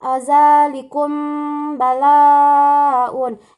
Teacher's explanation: Ayat 49 yaitu pada kalimat zalikum balaun, yaitu mim sukun bertemu dengan huruf ba. Cara membacanya itu didengungkan. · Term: ikhfa syafawi